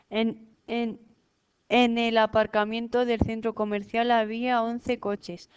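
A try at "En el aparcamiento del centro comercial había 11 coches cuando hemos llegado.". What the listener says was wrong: No te pares que no hay coma. Había 11 coches cuando hemos llegado.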